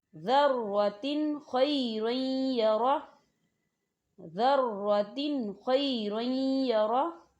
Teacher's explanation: اب آپ تنوین کی مثال کو دیکھیں، ذَرَّةٍ خَيْرًا يَرَهُ، ذَرَّةٍ خَيْرًا يَرَهُ، دیکھیں تا کے نیچے جو ہے دو زیر ہیں اور یہ تنوین ہے، اور تنوین کے بعد جو ہے خا آ رہا ہے، خا جو ہے حروف حلقی میں سے ہے، تو یہاں ہم تنوین کو صرف ظاہر کریں گے، غنہ نہیں کریں گے۔ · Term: اظہار